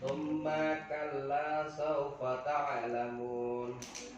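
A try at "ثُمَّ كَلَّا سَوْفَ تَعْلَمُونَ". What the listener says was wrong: Diulang lagi, memnya pendek.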